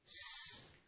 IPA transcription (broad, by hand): s